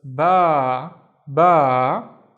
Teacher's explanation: And then we have this long stick, the al if remember. So the al if makes the ba twice as long.